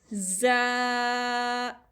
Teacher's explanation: ज़ा, equal to 1 finger and whistling letter यानी सीटी होती है इसमें